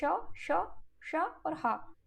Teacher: इनके उच्चारण में एक प्रकार का घर्षण होता है, इसीलिए इन्हें ऊष्म व्यंजन कहते हैं।